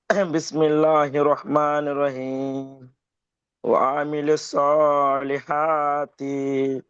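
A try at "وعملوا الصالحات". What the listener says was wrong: তি টান হয়ে যাচ্ছে, তি টান হবে না।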